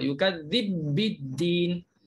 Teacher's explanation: Kena tekan pada ba yang kedua. Yukadzibiddin. Tapi tak ada dengung lah. Sebab ba bukan berdengung kan. Tak payah yukadzib biddin, tak ada dengung. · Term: idgham kabir